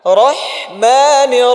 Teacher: হায়ের আওয়াজটা চলমান রাখেন।